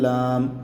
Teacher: لام کو اوپر والے دانتوں کے پیچھے زبان لگا کے ادا کیا جائے گا